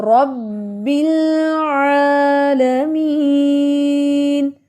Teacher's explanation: شد والے حرف کی 2 ادائیگیاں ہوتی ہیں. پہلی آواز ہوگی رب، دوسری ہوگی بی · عین عین، یہ بھی ہمارے حلق کے مڈ والے پارٹ سے ادا ہوتا ہے